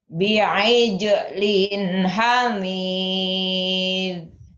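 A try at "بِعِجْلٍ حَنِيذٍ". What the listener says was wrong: B-nya jangan jangan panjang ya. Langsung bi'ijlin hanil. Kolahnya bi'ijlin hanil.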